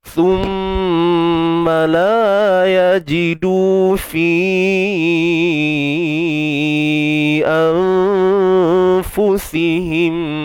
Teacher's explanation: Nun mati jumpa fa, ikhfa haqiqi. Nun sembunyikan di sisi huruf fa dengan dengung yang nipis.